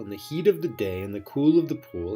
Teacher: that's two unstressed syllables followed by one stressed over and over